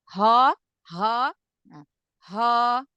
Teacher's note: kalau yang tebal tuh karena suaranya naik ke langit-langit